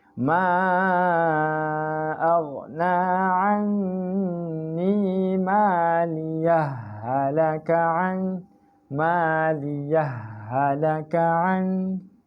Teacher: Idgham lah sebab ha jumpa ha. Jadi idgham mutamasilain. Masukkan ha tu.